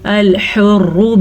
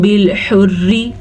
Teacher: پہلی را پر پڑھی جائے گی، دوسری را باریک پڑھی جائے گی. اس را کے اوپر پیش ہے اس لیے پر پڑھیں گے، جبکہ اس را کے نیچے زیر ہے تو یہ را باریک پڑھی جائے گی.